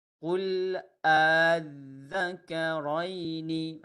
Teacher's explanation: Disebut dua hamzah tetapi hamzah kedua itu tashil tidak jelas.